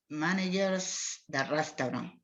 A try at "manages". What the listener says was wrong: Manages, sin R.